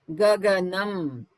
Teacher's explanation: In Gaganam, the tongue is just touching the teeth.